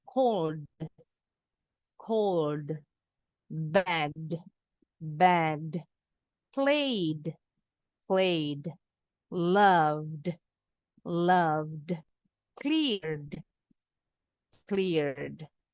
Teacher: you can feel the vibration in your vocal cords. Kalau kalian taruh tangan kalian di leher, nih ditekan ya, terasa getarannya. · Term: voice consonant sound